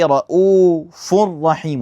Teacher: pronouncing two consecutive letters, which is the N sound in the Tanween, and the Ra, those are the two consecutive letters, as one single mushaddad letter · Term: Idgham